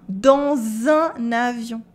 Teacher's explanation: Here we also do la liaison between dans and un.